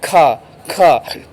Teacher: वायु के निकलने का मार्ग संकरा हो जाता है। उन्हें वायु घर्षण करके निकलती है। हम ये कह सकते हैं जो संघर्षी होते हैं ये बड़े ही संघर्ष से निकलते हैं।